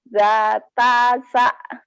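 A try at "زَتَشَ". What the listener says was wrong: Zatasya. Shinnya belum keluar ya, nggak apa-apa hutang shin. Kalau titiknya 3, anginnya gede.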